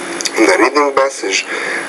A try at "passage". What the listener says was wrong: when you say the word passage, the P, you need to pronounce that with a little bit more air. The reading passage.